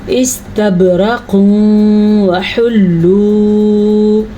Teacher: تنوین کے بعد یمون میں سے واو آیا ہوا ہے تو یہاں پہ ادغام بالغنہ ہوگا